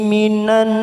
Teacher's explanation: minan ada bacaan gunnah karena ada huruf nun yang bertasdid